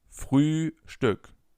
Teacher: The first Ü is a long Ü sound and the second one is a short one.